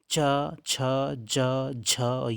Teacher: यह तालू से बोले जाते हैं इनका उच्चारण स्थान तालू है